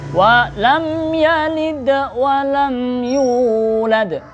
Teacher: Yulad itu hurufnya qalqalah yang di akhir.